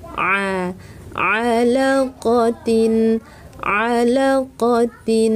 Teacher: Alaqotin, jangan diucapkan sengau, 'a' berasal dari tengah tenggorokan, jangan dibaca sebagai 'a' ( nasal).